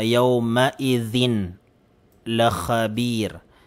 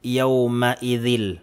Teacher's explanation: Mapapawalang bisa yung tanwin at yung lam ay malalagyan po natin ng tashdid, magiging double letter po siya.